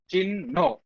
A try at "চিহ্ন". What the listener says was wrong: চিহ্ন, বাতাস বেশি বের করো। হ্যাঁ, গুড।